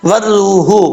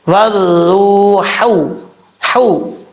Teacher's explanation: جو جیم کی شکل میں ہا آتی ہے یہ بریک پڑھا جاتا ہے، درمیان حلق سے ادا ہوتا ہے